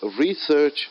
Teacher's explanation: So the word research is a noun. I'm stressing more on the word re, first syllable.